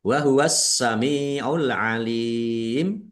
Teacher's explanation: Karena tidak dibaca langsung masuk ke huruf ke huruf berikutnya yaitu sin. Ditandai sinnya ada tasdidnya. Sinya dibaca dobel. Mim kasrah ya sukun mad thobi'i panjang dua harakat. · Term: alif lam syamsiyah, dibaca double